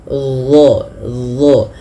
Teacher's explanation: Kemudian pada lafal dha, huruf dha ini dia makhrajnya sama dengan huruf dzal, akan tetapi yang membedakan adalah huruf dha ini harus ditebalkan.